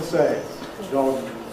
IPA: dɒgz